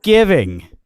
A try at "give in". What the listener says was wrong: You're you're saying ing. It's give in. Give in. Yeah, you're saying giving. give in.